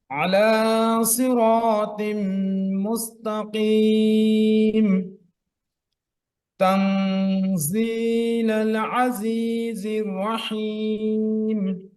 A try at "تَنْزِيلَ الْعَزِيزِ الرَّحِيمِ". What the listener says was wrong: রটা একটু মোটা করেন تنزيل العزيز الرحيم الرحيم